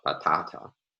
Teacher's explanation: Italian, native speakers of Italian don't produce aspirated stops regularly, but a native speaker of English would produce an aspirated stop in this stressed syllable, the second syllable